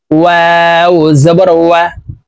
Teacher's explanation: ওয়াও হরফ ঠোঁট গোল করে দুই ঠোঁটের মাঝে ফাঁকা রেখে উচ্চারণ করতে হবে।